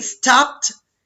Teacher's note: Played, únicamente se escucha la d y la e, hagan de cuenta que no existe. Y stopped, que en lugar de la ed escuchamos una pequeña t